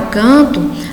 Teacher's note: Porque na palavra canto aparece esse grupo AN, tá? A gente percebe que a vogal ela é nasalizada pelo N. Então, esse grupo AN apresenta um único som, o que nós chamamos de dígrafo, que nós vamos ver posteriormente, tá? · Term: dígrafo vocálico